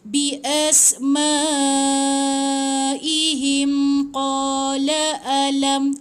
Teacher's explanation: Contoh macam ni mim mati bertemu dengan qaf kan. So kalau kita sambung, jangan dengungkan, jangan tahan 2 harakat. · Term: izhar